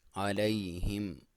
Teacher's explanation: یا ساکن سے پہلے لام ہے، عین کو کلیئر کرے، اور یا ساکن سے پہلے لام پہ زبر ہے تو یہ ایسے یالین بولا جاتا ہے، اور اس کو علیہم نہیں پڑھنا، علیہم. ہا کو کلیئر کریں، میم پہ اظہار ہے